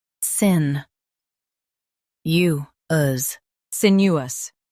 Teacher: Stress sin and keep U smooth.